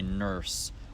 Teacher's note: in America instead of people saying nurse they'll say nurse where the sort of er sound is held throughout the entire duration of the vowel